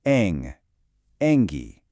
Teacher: There's a little bit of a nasal sound in there